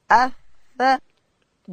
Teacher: ثا ادا کیږي د ژبې سر به د لوړې زامې د مخ د دوو غاښو و سرو ته وروړو